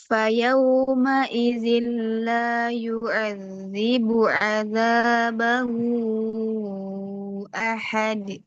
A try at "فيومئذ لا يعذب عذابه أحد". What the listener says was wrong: ainnya masih agak agak berat ya. Kebiasaan atau seperti apa?